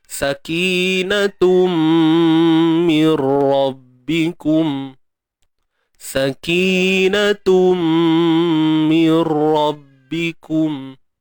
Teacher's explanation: Bila tanwin bertemu mim, kat sini namanya idgham bi gunnah. Masukkan bunyi tanwin ini ke dalam mim. Itu makna idgham. Kemudian bi gunnah. Dengung kadar dua harakat.